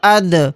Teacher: یہاں پر دال جزم ہے یعنی دال ساکن ہے تو اس میں قلقلہ کر کے پڑھیں گے.